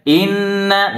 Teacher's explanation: Nun bertasdid dibaca dengung ditahan yang lama dengungnya